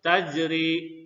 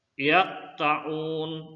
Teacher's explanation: Nah, ingatkan ya, berharakat sukun bukan karena wakaf atau berhenti ya, berharakat sukun. Cara membacanya dengan menekankan kuat makhrajul huruf dari huruf qalqalah yang berharakat sukun sehingga lafalnya memantul dengan kuat ya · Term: qalqalah sugra